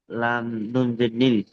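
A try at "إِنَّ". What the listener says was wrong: এখানে লাম নুন জের হবে না হামজা নুন জের ইন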